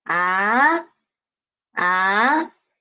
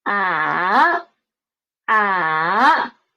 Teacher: First is flat and second is rising up and the third is drop down and rise up again and the fourth is drop down.